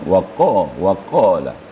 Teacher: kafnya harus dipangkal lidah ada dentumnya waq waqala tidak boleh ada embel-embel tapi bersih bersih tapi besar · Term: AFF